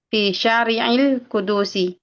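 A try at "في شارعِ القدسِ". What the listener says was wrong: Nah, Jalan Kudus, Syari'il Qudsi, dalnya sukun.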